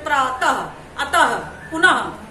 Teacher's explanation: विसर्ग का उच्चारण ह जैसे होता है। जब हम बोलते हैं तो हमारे मुंह से ह भी सुनाई देता है